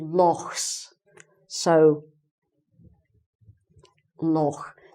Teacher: they make this sound in the back of their throat which is like the german sound